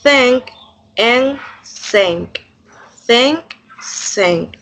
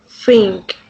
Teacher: In this case, the lower lip touches the upper teeth producing the f sound.